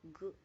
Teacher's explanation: produced by raising the back of the tongue to the soft palate